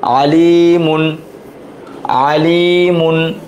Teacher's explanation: এই যে এখানে মাদের হরফ আছে, জেরের পর জজমলা ইয়া, এক আলিফ টান, মিম দুই পাশ মুন, এটা তানবিন। তানবিনের পর কি আসছে? হা, হা হচ্ছে ইজহার হরফ। তাহলে কি হবে? গুণনা ছাড়া স্পষ্ট